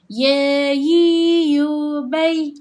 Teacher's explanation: ada huruf yang menggunakan tengah lidah kita iaitu tengah lidah kita ini kan bahagian tengah. Bahagian tengah lidah ini dia akan rapat keel langit atas iaitu huruf ya, jim dan syin.